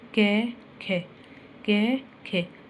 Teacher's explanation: कै एकदम से बोला गया, और खे पे क्या हुआ, खे पे थोड़ा जोर पड़ा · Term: बलाघात